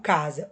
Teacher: O C tem som de K, o S tem som de Z.